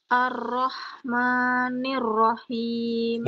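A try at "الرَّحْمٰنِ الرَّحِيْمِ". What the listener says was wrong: Ketika baca Ar-Rahma, ma itu jangan terlalu panjang, Bu. Ya. Seperti diayun saja, seperti diayun. Ar-Rahmani, Ar-Rahmanir-Rahim.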